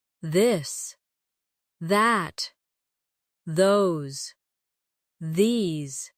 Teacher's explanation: Now practice the softer version of th where you let your tongue touch your teeth lightly but use your voice